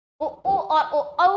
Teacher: बोलते समय होठों की आकृति गोल होती है, तो ये वृत्ताकार होते हैं,